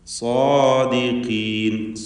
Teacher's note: അതിൻ്റെ ദീർഘാക്ഷരമായ അലിഫിലും തഫ്ഖീം കൊടുക്കുക, തടിപ്പിച്ച് ഉച്ചരിക്കുക. ഖാഫിന് കുറഞ്ഞ തഫ്ഖീമാണ് ഉണ്ടാവുക, കസ്റായതുകൊണ്ട്.